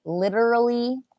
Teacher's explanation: this T here could be a T sound, or it could be a little bit like a D sound